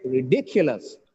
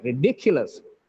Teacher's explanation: the stress is on the penultimate syllable